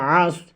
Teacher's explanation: আইন গলার ভিতরে যাবে সদ হরফটি মোটা হবে